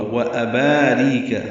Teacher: وَأَبَارِيقَ حمزہ کو واضح ادا کرنا ہے بالجہر ، با الف مدہ ہے، ری را باریک ہے، قاف ساکن